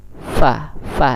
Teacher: Huruf bibir bawah dengan gigi muka yang di atas. Fa. Dan dia al-hamas juga, mengeluarkan ada udara atau napas kita yang keluar saat kita mengucapkan fa.